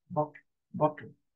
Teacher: even in Bottle you can hear the T and the L is shortened